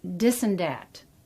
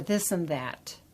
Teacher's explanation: if you pronounce it as a th instead of a d, then you're considered standard